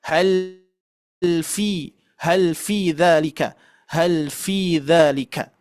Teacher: huruf fa itu bersentuhan, tidak ditempelkan secara bertenaga ya. Kalau ditempelkan secara bertenaga itu menjadi fa, tetap fa bunyinya ya.